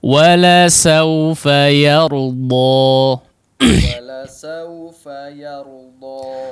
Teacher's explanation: Yardo karena setelahnya ada huruf yang tebal, ro, ditambah lagi setelahnya huruf dod yang sangat tebal ya. Maka di sini perhatikan pengucapan huruf ya-nya. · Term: huruf yang tipis